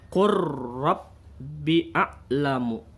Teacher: Contohnya, nih ada huruf la mati yang harusnya dibaca kul, karena di sini ada huruf ro dan lam ro ini makharijul hurufnya berdekatan, sama-sama ada di ujung lidah, maka cara membacanya huruf lamnya ini dimasukkan ke huruf ro.